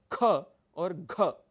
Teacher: आपकी प्राण वायु शक्ति अधिक लगती है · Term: महाप्राण